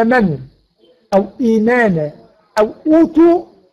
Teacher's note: اجتمع همزتين الاولى متحركه والثانيه ساكنه، ابدلت الهمزه الثانيه من جنس حركه ما قبلها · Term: مد البدل